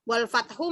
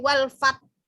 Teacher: Haknya tetap apa namanya sifat haknya harus keluar. Hak kan dia ada di tengah tenggorokan, itu harus keluar gitu.